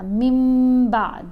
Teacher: ساکن یا نون تنوین کے بعد حرف با آ جائے تو نون کی آواز کو میم کی آواز کے ساتھ بدل کر پڑھتے ہیں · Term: قلب